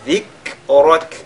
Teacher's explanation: le kaf, on le ressort avec al-hams et avec at-tarqiq